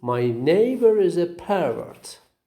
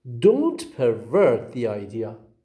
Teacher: the verb has got the stress on the second syllable